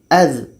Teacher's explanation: Huruf yang kedua dza kita bantu lagi dengan alif dibaca dengan az. Az dza ini letaknya pada ujung lidah menempel dengan ujung gigi seri atas. Ujung lidah menempel dengan ujung gigi seri atas.